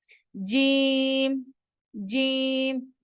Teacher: जीम को अदा करते वक्त जबान का जो बीच है वह ऊपर की तरफ उठना चाहिए